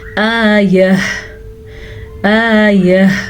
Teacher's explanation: ہا کی آواز آخر میں ضرور آنی چاہیے